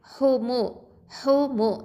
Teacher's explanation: இந்த ஹ அப்படிங்கிறது காற்று வெளியில் வரணும். ஹம்ச சிஃபத் இருக்குது. வசத்தல் ஹல்க்கு எழுத்து நடுத்தொண்டை எழுத்து.